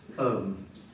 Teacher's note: O, M, and no B. We've lost the B in the history of English.